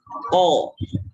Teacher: Kalau qaf tidak mengalir angin, ya. Ko. Jadi jangan keluar angin, jangan ko, tapi ko, ya.